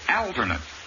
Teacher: the first a is short and the accent is on the first syllable